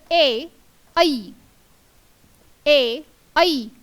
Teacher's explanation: ए, ऐ यांचा उच्चार जेव्हा आपण करतो तेव्हा कंठ आणि टाळू या दोघांच्या साहाय्याने त्यांचा उच्चार होत असतो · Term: कंठतालव्य वर्ण